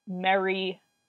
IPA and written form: mεɹi (merry)